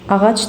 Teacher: söz sonunda BGC samitləri gəldikdə özündən sonra heç bir işlənmədikdə sözün sonundakı son samit kar tələffüs olunur. Ağac deyə tələffüz olunacaq.